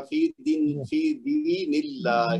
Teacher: अल्लाह का जो लाम है वो बारीक पढ़ा जाएगा